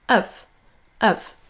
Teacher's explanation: ce sera un son schwa, donc le léger E, suivi d'un V. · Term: forme faible